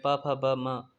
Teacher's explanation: प वर्ग में प फ ब म ओष्ठ से आता है। स्पर्श व्यंजन है ये सब।